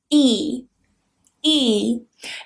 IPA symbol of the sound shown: iː